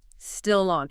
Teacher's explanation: That final consonant sound naturally attaches to the following vowel sound. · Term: linking